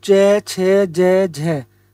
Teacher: इनका जो उच्चारण होता है हम अपने तालव्य से करते हैं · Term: तालव्य ध्वनि